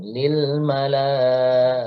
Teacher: Jadi lam bukan termasuk huruf kolkolah, tidak memiliki sifat kolkolah. Jadi jangan sampai ada suara yang terpantul, jangan ada lile. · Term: lam sukun